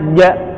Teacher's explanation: Nah, itu salah, karena huruf ja adalah huruf al-jahru, artinya huruf yang tidak diiringi dengan kebuangnya nafas keluar